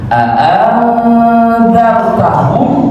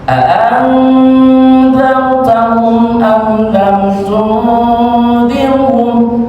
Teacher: ketika kita membaca a'anzartahum, di situ ada gunnah, ada khayshum, ada suara yang keluar dari pangkal hidung. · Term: ikhfa